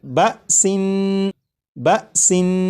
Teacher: اس لفظ کو جب آپ نے پڑھا جیسے بَسِن، تو سین کو پڑھتے ہوئے آخر میں جو نون ہے، نون کی ادائیگی کرتے وقت آپ نے غور کیا ہوگا کہ زبان تالو سے لگی